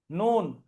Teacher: জিভের আগা তার বরাবর উপরের তালুতে লেগে উচ্চারণ হবে